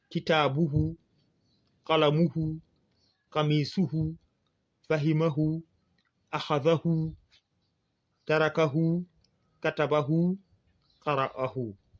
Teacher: C'est comme je l'avais dit, quand ce n'est pas précédé d'une voyelle longue ou d'un soukoun. Ici, nous avons le hu qui doit être tiré.